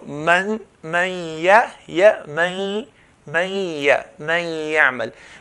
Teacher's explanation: I'm saying the sound from the nose and I'm pronouncing the ya from the mouth. So two types of sounds are happening at the same time. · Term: ghunna